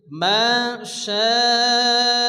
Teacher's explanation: হরফে মাদের পরে হামজা একই শব্দের মধ্যে আসছে মধ্যে মুত্তাসিল চার আলিফ টেনে পড়তে হবে